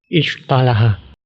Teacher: huruf shad tersebut terperangkap di antara langit-langit dan lidah. Kemudian setelahnya infitah, artinya harus dilepaskan langsung.